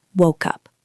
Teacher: Woke ends in K. Up starts with u consonant to vowel